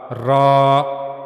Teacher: را کے بارے میں ہم نے پڑھا کہ زبان کی نوک کا اوپر والا حصہ اوپر کے سامنے والے دو دانتوں کے پیچھے کے اندرونی مسوڑے سے جب ملے گا تو وہاں سے را ادا ہوگا